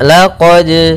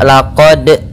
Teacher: Pada bacaan laqad di sini ada hukum tajwid berupa qalqalah, yaitu suara dalnya. Apa itu qalqalah? Artinya memantul. Maka di sini kita harus mantulkan, ya, mantul.